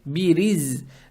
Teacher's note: Далее стоит буква за, она обычная, не межзубная, с сукуном. Получается бириз.